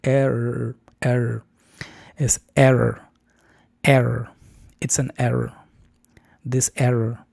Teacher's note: Aquí las dos vocales están asociadas a sonidos con R estadounidense.